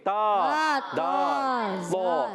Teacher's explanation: تا کا مخرج زبان کا سرا اوپر کے دانتوں کے اندرونی جڑوں سے، یعنی اوپر کے دانتوں کی جو جڑیں ہوتی ہیں وہاں سے تا دال تو، یہ 3 حروف ادا ہوتے ہیں۔ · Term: حروف نطعیہ